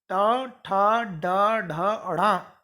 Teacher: अब आइए, तीसरा उच्चारण स्थान है मूर्धा। मूर्धा यानी जीभ के ऊपर वाला हिस्सा ऊंचा है, मूर्धा।